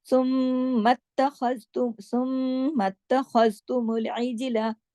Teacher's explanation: इसमें जीम पे कलकला होगा, बाकी तमाम बारीक हुरूफ है। ख्वा मोटा है, ख्वा को खराश के साथ पढ़ा जाएगा।